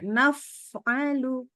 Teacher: Fa-nya kurang keluar udara. Harus keluar udara.